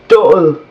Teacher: the soft d is this almost vv sound like th in English